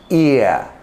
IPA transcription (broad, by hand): ɪə